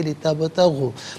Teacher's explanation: قلقلہ کیا جائے گا، آواز لوٹتی بھی محسوس ہونی چاہیے